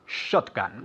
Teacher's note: one more time emphasizing the first syllable